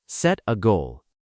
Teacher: Notice how the T in set connects slightly to the A in A making it sound like set a goal and remember to keep your voice clear and confident on the word goal. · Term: link the words